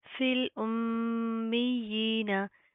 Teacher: फा लाम जेर फिल हमजा मीम पेश मीम या जेर मी फिल मी या खड़ी जेर ही नून से बढ़ना फिल उम्मीना. मीम के ऊपर शद है, गुना करेंगे, ना के अंदर साउंड पैदा करेंगे. या के ऊपर शद आ रही है, सख्ती से मजबूती से जमा कर पढ़ेंगे.